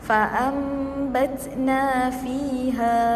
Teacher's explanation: Di sini kita perlu rapatkan bibir kita. Cara bacaan dia adalah dengan kita merapatkan bibir beserta dengan dengung 2 harakat. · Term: iqlab